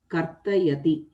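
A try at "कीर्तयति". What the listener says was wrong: Kirtayasi, actually kirta. You see, glorifying, not karta. It is kirta, kirtanam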